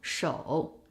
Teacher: Starts at 2, a very low position, goes down even lower to the bottom of the tone and then goes up. But when it needs to change to a half third tone, it stops at 2-1.